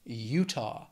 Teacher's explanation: Two syllables, stress is on that first syllable